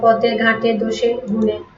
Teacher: পদের শেষে এর উচ্চারণ সংবৃত হয় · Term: সংবৃত উচ্চারণ